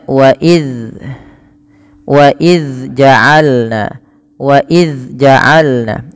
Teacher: suaranya agak dialirkan karena zal sifatnya adalah, salah satunya adalah sifat rokhawah